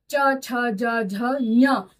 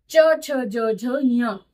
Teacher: दूसरा च वर्ग है जिसे हम तालु की सहायता से बोलते हैं।